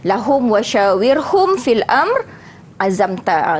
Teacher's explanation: Mimnya mesti jelas disebut, tak boleh dengung, ya. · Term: izhar syafawi